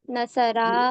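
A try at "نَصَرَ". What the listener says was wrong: नसरा एकदम शॉर्ट पढ़ना है, नसरा।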